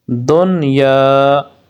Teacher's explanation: ان 4 کلمات میں نون ساکن کے بعد حروف یرملون ایک کلمے میں آنے کی وجہ سے ادغام نہیں بلکہ اظہار مطلق ہوگا، اس لیے ان 4 کلمات میں غنہ نہ کریں۔ غنہ نہ کرنے سے مراد یہ ہوتا ہے یعنی کہ اس کو لمبا نہیں کرنا نون ساکن کو